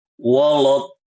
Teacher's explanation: Ini membaca huruf waw dan lam dengan tebal.